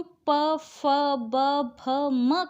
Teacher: जब हम प, फ, ब, भ, म का उच्चारण करते हैं तो हमारे जो होठ हैं वो आपस में स्पर्श करते हैं। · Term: ओष्ठ्य